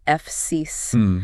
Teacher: It features two continuous hissing sounds at the front, a long vowel in the middle, and that very crisp finish.